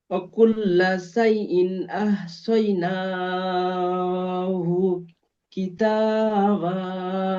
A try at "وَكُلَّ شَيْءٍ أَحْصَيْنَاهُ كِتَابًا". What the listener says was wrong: অকুল্লা শাইইন, এই সিন অক্ষরটি সিন উচ্চারণ হয়ে যাচ্ছে। শাই, শিন ইয়া যাওয়া শাই। অকুল্লা শাইইন